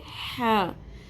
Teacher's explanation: سانس کی آواز کے ساتھ حلق کے درمیان میں سے نکالنا ہے ہم نے ہا